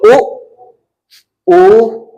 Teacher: इनके उच्चारण में ना तो अगला कुछ भाग प्रयोग होगा ना बीच का सीधे कंठ से आवाज आएगी तो जीभ का पिछला हिस्सा प्रयुक्त होगा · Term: पश्च स्वर